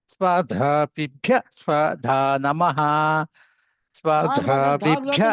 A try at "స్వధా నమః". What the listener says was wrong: ధానుదాత్తం చెబుతున్నారు. రెండోది స్వధా గట్టిదాత్తం చెప్పండి సారు.